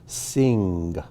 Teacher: you go from the n sound right into the g sound